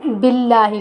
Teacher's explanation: لفظ اللہ کے نام کو ہم باریک پڑھیں گے کیونکہ لفظ پہلے حرف کے نیچے زیر ہے، اس لیے ہم انہیں باریک پڑھیں گے۔